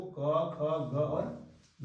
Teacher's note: कंठ के सहारे हम बोलते हैं कवर्ग के 4 अक्षर को